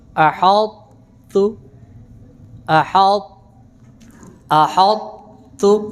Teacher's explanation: اس کی ادا یہ ہے کہ اس میں پہلے طا کی صفت استعلاء کو باقی رکھیں گے، یعنی طا کو تا میں مکمل طور پہ مدغم نہیں کریں گے، طا کی جو صفت استعلاء اور اتباق ہے وہ باقی رہے گی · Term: ادغام ناقص